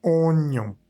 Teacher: Acá tenemos una vocal nasal que es ON, nuevamente con la boca muy, muy, muy cerradita. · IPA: [ɔ̃]